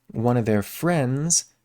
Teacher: no D there in friends